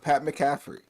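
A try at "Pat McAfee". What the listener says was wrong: McAfee. You got the emphasis on the wrong syllable.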